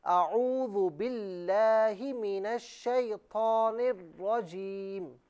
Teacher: اچھا یہاں پر آپ نے اعوذ جو پڑھا نا، اسے حمزہ پر جو زبر ہے اسے بالکل نہ کھینچے